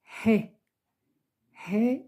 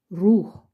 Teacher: est un peu compliquée en français c'est le son he he ça vient depuis le fond de la gorge